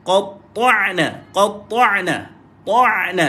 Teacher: Lebar je mulut. Qata' bila mati ain, lebarkan mulut dan dia ada sifat tawassut.